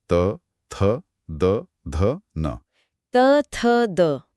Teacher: जीभ दांतों से टकरा रही है।